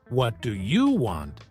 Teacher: you say it with a flat tone it sounds neutral but if you stress you like what do you want it can sound rude or aggressive